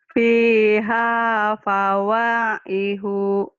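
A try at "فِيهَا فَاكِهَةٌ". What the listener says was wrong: Ini kap ya, ini bukan ain. Fawaki, pendek.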